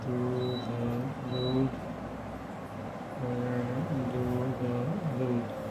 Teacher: तो ये जो है, ये सब जो है अल्प प्राण का उदाहरण है। शब्द के अंत में आने वाली महाप्राण ध्वनि जो है उच्चारण में अल्प प्राण हो जाती है